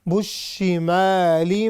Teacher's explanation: جب شین پر شد آئے گی تو we have to emphasize on it، ہم اس کو تھوڑا سا زور دے کر، اس کو دبا کر ہم پڑھتے ہیں، چونکہ یہ شد ہے۔ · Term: شین مشددہ